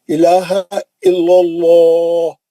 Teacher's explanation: الا اللہ موٹا پڑیں گے لام جلالہ کیوں جو لام پہ زبر ہے وہاں سے لے کے جا رہا ہے الا اللہ موٹا پڑیں